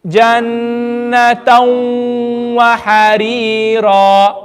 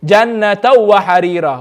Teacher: I'm going to skip the do zabar and I'm going to read the waw with gunna.